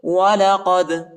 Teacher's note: دال کو جھٹکے کے ساتھ پڑھیں گے، یعنی قلقلہ کریں گے